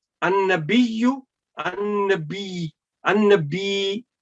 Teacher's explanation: when the last ya with dhamma will be muted, so there will be 2 ya with sukoon. So you need to remember that, you need to pronounce that ya as well.